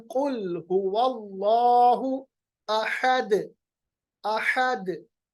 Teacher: हम अहद नहीं पढ़ते। आखिर में जो हमारे पास दाल साकिन बनता है, उसको, उसकी आवाज को हम वापस लाते हैं, जिसको हम कलकला कहते हैं।